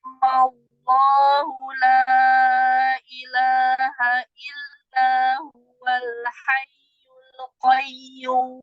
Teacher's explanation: Jadi mi-nya dibaca 6, malloh langsung fathah.